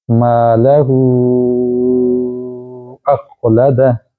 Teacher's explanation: ملا کے پڑھیں گے تو مد لمبی ہوگی، چونکہ چھوٹی مد کے بعد حمزہ آ گیا، یعنی مد اصلی جو ہے وہ مد فری میں آ جائے گی۔